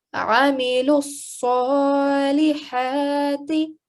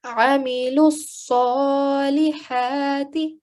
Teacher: I'm going to recite it one more time and make sure that you remember that Sod has got a shadda, so we will put a lot of pressure and emphasis on it as well. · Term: sad mushaddad